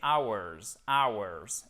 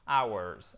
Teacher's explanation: C'est un des rares mots qui commence par un H pour lequel en anglais, on ne prononce pas le H